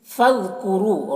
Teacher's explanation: را کے اوپر پیش ہے، را کو پر پڑھیں گے، اور واو میں جو مد ہے مد منفصل ہے۔